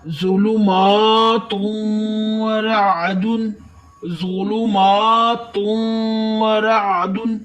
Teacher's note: فی ظلمات ورعد، ظلمات ورعد، زوات کو تھوڑا سا موٹا کرے، میم پر کھڑی ہے ایک الف کے برابر لمبا کرتے ہوئے، و نون تنوین کے بعد واو آیا ہے، یہ بھی حروف یرملون میں سے ہے۔